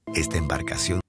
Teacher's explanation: La vocal A fue omitida por completo.